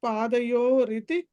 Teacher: పాదయోరితి దగ్గర ఆ ర అన్న చోట యాక్చువల్గా అది విసర్గ వచ్చింది